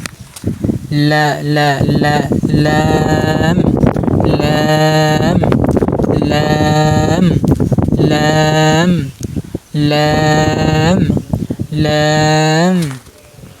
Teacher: মানে জিহ্বার আগা সামনে যে মাড়ি আছে, মানে আপনার সাইডে কত দাঁত থাকে এই সাইডে মানে আপনি বুঝাই দিই। জিহ্বার আগা মাড়ির সাথে লাগিয়ে উচ্চারণ করবেন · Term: লাম হরফ